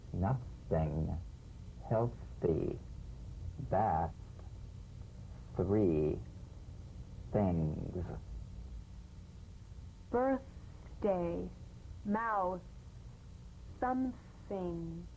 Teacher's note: the unvoiced tongue pointed teeth fricative consonant play this dry gentle whisper lightly and softly without the slightest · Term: voiceless th